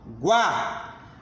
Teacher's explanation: Quando eu pronuncio a sílaba guá, a letrinha A eu pronunciei com maior intensidade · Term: vogal